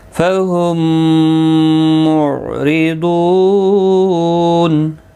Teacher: میم ساکن کے بعد دوسرا میم آیا ہے تو ادغام شفوی ہوگا، گنہ کے ساتھ پڑھیں گے. یہ والا میم اس کے اندر مدغم ہوتا ہے.